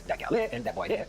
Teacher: Gullah speakers also drop consonants for vowels where the two words meet. For instance, in the sentences that gal there and that boy there, the word for there, adds or subtracts the D depending on if there's a consonant or a vowel preceding it.